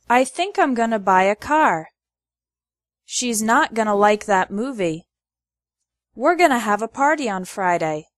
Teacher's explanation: The word to becomes ta or a. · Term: reductions